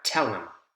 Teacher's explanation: Him is reduced to or im. Don't hear the H consonant sound.